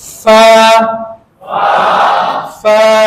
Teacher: اوپر کے دانت، نیچے والے ہونٹ جب ٹچ ہوتے ہیں تو اس سے فا ادا ہوتا ہے